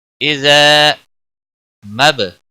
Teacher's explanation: با ساکن پر قلقلہ ہوگا